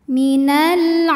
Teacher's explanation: karena Ain barisnya fathah panjang maka Ain ini panjang dua harakat